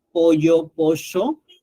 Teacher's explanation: La doble L y no cambia el significado, así que no tiene valor fonológico. En el caso argentino, la sh, ¿no? Pollo, pollo, no cambia el significado, de modo que no tiene valor fonológico.